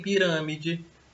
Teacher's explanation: em pirâmide, a sílaba tônica é ran, né, a antepenúltima. Então, ela recebe uma classificação de proparoxítona, porque a sílaba mais forte é a antepenúltima, ok?